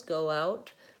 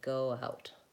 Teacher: Typically, if you link those, go out, the W will come in. It's just the natural sound that emerges from linking.